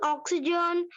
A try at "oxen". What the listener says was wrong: Oxen, not oxygen. Oxen, oxen.